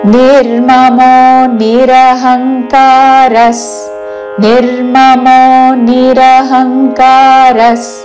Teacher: నిరహంకారస్ విసర్గ తర్వాత సాతో పదం మొదలవుతున్నది కాబట్టి స ఉచ్చారణ